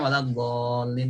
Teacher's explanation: dibaca waladhdallin, dibaca 6 harokat. Ketika kita baca kurang dari 6 harokat, maka termasuk mengurangi kadar mad.